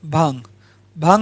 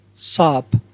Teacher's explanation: अनुनासिक जो है मुख और नाक दोनों से बोला जाता है